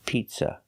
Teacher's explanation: remember the second vowel, is a short sound like cup and up, not an open sound ah, pizza. It's not ah like hot and stop.